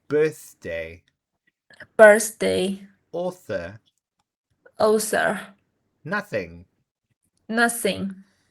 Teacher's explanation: Now we're going to practice the voiceless TH sound in the middle.